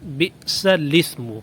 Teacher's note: انعمہ اجتباہ، بئس الاسم، یہاں پہ الاسم کے پڑھنے کا طریقہ یہ ہے کہ بئس کی سین کے بعد الاسم میں لام کو زیر دے کر سین کے ساتھ ملا کر پڑھیں